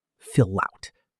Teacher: The consonant sound at the end of the first word links right into the vowel of the second.